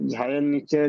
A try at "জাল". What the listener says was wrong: জি, কিসের নিচে? ঝা না জি, জাল, জালের নিচেই, জাল, জাল। না জি, ঝা সে উর্দু শব্দ ব্যবহার হয়, সে এরকম লেখা থাকে আর 3টে নোক্তা থাকে এরকম। চলেন চলেন চলেন, পড়েন, জাল হবে ওটি।